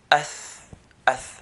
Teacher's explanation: air would flow with it due to weakness in its origin